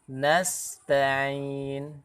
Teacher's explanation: Ini sempurnakan atau berikan haknya huruf sin, yaitu mengalirkan nafas dari sifat hams. Nasta'in. Jadi tidak terlalu cepat.